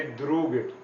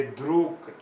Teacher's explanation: So endings of voiced consonants changes to voiceless consonants.